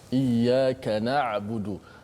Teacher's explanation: Ain yang tempatnya berada di tengah halqum kita. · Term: huruf ain